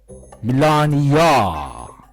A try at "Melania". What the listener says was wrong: It's not Melania. It's Melania. It's not that long of an O. It's Melania, not Melania.